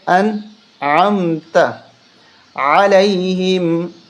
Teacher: اب یہاں پر کچھ لوگ غنہ کرتے ہیں، یہ غنہ کرنا غلط ہے، اس طرح پڑھنا غلط ہے، کیونکہ نون کے بعد، نون ساکن کے بعد عین حرف حلقی ہے، تو یہاں غنہ بالکل نہیں کر سکتے، اجازت نہیں، منع ہے۔